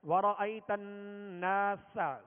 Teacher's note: سین کو سختی کے ساتھ اور باریک پڑھیں گے